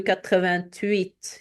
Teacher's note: we have a liaison, a link between the T and the H, the silent H, because it's actually a silent H.